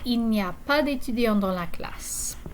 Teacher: des becomes de, and it gets linked up with étudiant like a contraction